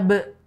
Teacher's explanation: Makanya kemudian kita baca dengan qalqalah karena ba sukun itu ada qalqalahnya sehingga dibaca be